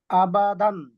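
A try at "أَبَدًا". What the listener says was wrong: জবরদের পেশে দেরি করা যাবে না জবরদের পেশ যে অক্ষরের উপরে থাকবে সেই অক্ষরটা দ্রুততার সাথে উচ্চারণ করতে হবে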